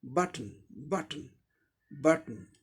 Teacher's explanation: एक सिलेबल ब, इसमें वावल्स साउंड है, दूसरे सिलेबल में वावल साउंड नहीं है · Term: सिलेबिक कॉन्सोनेंट